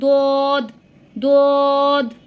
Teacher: আপনাদের জিহ্বার গোড়ার কিনারের সাইডটা উপরের মাড়ির দাঁতের গোড়ার সাথে লাগিয়ে এই দোদটা উচ্চারণ হবে। দোদ দোদ। তো এটা কিন্তু আমরা নর্মাল ত বলবো না, বাংলায় যে আমরা ত বলি ওই ত না, এটা হবে উচ্চারণ তো।